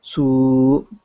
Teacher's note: su with the dhamma maqluba, su, which makes two harakat